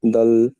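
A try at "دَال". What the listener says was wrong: দাল। দাল, মাঝখানে টানটা দিতে হবে। এই দয় আকার ল আছে না, এর মাঝখানে টানটা দিতে হবে। এই এই যে দুটো অক্ষর আছে, এর মাঝখানে টানটা দিতে হবে। দাল।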